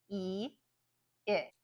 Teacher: you'll feel the sound move from the front and just one step back